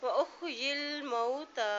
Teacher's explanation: تاکہ پر کھڑی زبر ہے، ایک حرکت اس کو لمبا ادا کریں